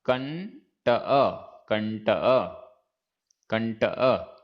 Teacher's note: यहां पर आधा ण हो गया, अनुस्वार के स्थान पर आधा ण